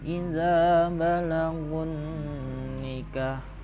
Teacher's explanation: Nah, balagun nikah di situ kena ada nun tasdid, maka dibaca 3 ketukan dengungnya